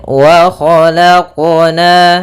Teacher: dalam pelafalan qalqalahnya tidak ada tambahan hamzah ataupun saktah. Ya, akan tapi dia langsung saja mengalir wa khalaqna.